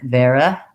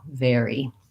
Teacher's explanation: make sure that you use a tense E for your Y sound. · I often will hear that more like vera, where the unstressed syllable becomes a little bit more of a schwa or an I sound, and you want to avoid that pattern. Even though it's not stressed, you still have a tense, clear E vowel